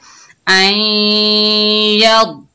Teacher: द्वाद जो है मोटा हरूफ है, हरूफ मुस्ताला में से, तो मोटा पढ़ेंगे और ख्याल रखना है कि द्वाद में कलकला पैदा ना हो। यद इस तरह करके नहीं पढ़ना।